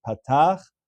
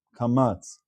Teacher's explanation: a patach could be more open, whereas a kamatz might be more closed.